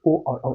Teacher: कंठोष्ठीय मतलब कंठ प्लस होठ, ओष्ठ मतलब होठ, दोनों की जरूरत पड़ता है ये व्यंजन बोलने में